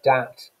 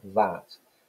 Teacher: substitution isn't it so dat for that so in this case a plosive sound is replacing the standard english rp um fricative phoneme